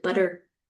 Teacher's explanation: the flap we often hear it in the medial position of words